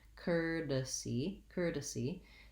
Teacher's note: it has the er vowel rather than the or or any other diphthong